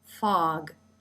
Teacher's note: And the lip comes up for the F sound, fog. Another ah as in father sound. And you can see the lips are relaxed, the jaw is dropped, and the tongue is flat. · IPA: /ɑ/